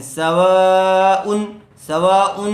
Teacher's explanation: ان الذین کفروا سواء علیہم، سواء، تنوین کے بعد حروف حلقی میں سے عین آیا ہوا ہے، اس لیے بغیر غننے کے جلد اظہار کر کے پڑھیں گے. سواء، سواء، ایسے غنہ کر کے نہیں پڑھیں گے.